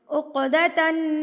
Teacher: عقدتن نون مشدد ہے تو غنہ بھی ہوگا